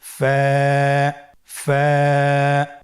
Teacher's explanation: স্ক্রিনে দেখতে পাচ্ছেন ফায়ের মাখরাজ। ফায়ের মাখরাজ হলো নিচের ঠোঁটের প্যাড সামনের উপরের দুই দাঁতের আগার সঙ্গে লাগিয়ে উচ্চারিত হয়।